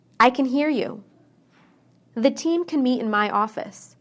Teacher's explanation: When I say can inside a sentence, I shorten the A.